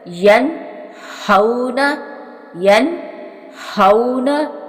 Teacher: اس سے آگے ہے ہا، 2 آنکھوں والی ہا، جو حلق کے ساتھ والا سینے کی طرف حصہ ہوتا ہے نا، حلق کا سینے کی طرف، وہاں سے یہ ہا ادا ہوتی ہے